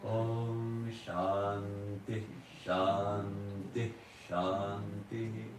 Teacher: Each time is Shantihi, but because in the Sandhi, the way we pronounce it, when the Visarga is followed by Sha, it kind of gets swallowed up. But if you listen closely, you'll find it there.